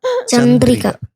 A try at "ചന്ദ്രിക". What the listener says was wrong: റാ അല്ല ര.